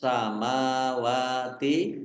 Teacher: sinnya ada tasdidnya sinnya dibaca dobel